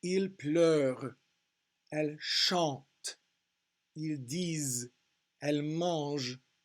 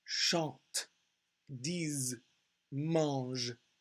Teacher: So the ENT is just silent in these verb conjugations.